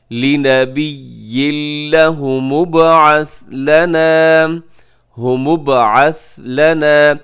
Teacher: جی یہاں پر ہم کریں گے ادغام لیکن بغیر غننے کے